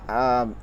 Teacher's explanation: 6 নম্বর মাখরাজ জিব্বার মধ্যখান, তার বরাবর উপরে তালুর সঙ্গে লাগায় জিম শিন ইয়া